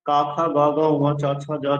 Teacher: প্রথমেরটা অল্পপ্রাণ তারপরেরটা মহাপ্রাণ তারপরটা অল্পপ্রাণ তারপর মহাপ্রাণ তারপরটা নসি এভাবে পাঁচ লাইন পাঁচটা ভাগে বিভক্ত বর্গে